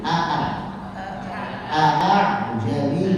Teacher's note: Jadi hamzah ketika dibaca tahqiq berarti makhrajnya dari tenggorokan. Sifat-sifatnya sempurna, dari mulai jahrnya, syiddahnya, istifalnya, infitahnya, maka itu jelas.